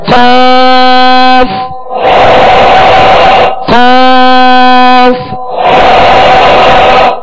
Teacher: زبان کی جڑ اور تالو کے نرم حصے سے 2 نقطے والا قاف جو پر پڑھا جاتا ہے وہ ادا ہوتا ہے · قاف. قاف کون سے حروف میں سے؟ حروف مستعلیہ میں سے. اس کو پر یعنی موٹا پڑھنا ہے